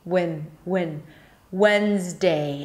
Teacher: drop your jaw a little bit for the A sound, so it's not super closed.